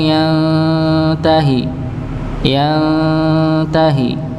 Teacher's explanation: disamarkan pada nun sukun bertemu dengan huruf huruf ta